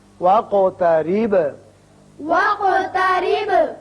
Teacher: قاف پر قلقلہ ادا ہوگا اور با پر بھی